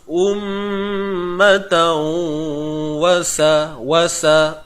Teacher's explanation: Memasukkan dengan dengung. Apa yang kita nak masukkan? Bunyi tanwin ini ke dalam waw. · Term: idgham bi gunnah